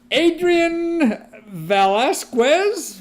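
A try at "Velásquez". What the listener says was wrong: Velasquez. Silent U. Velasquez. Velasquez. Velasquez. Ignore the U.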